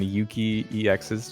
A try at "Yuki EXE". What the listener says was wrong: EXE. It's Yuki EXE. You said EX.